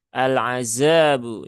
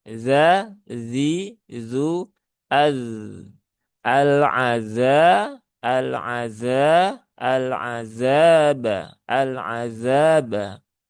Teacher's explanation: Maka pastikan yang berperan itu ujung lidah ke gigi seri atas ya.